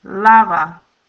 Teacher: according to the first rule of stress, the stress is going to be in the next to the last syllable, lava. When we add the pronoun, the stress is going to still be carried in that la.